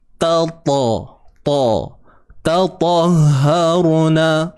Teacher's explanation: Huruf ta ni nak tebal dia kena naik pangkal lidah.